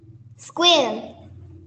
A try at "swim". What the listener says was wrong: Các bạn cứ đọc ra chữ Q đấy nhỉ, không phải chữ Q đâu nha. W, W, swim.